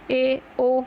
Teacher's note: जिसमें जिन अर्धविव्रत क्या, जिन स्वरों के उच्चारण में मुख द्वार आधा खुलता है, वो क्या कहलाएंगे आपके अर्धविव्रत, जैसे कि ए, ओ।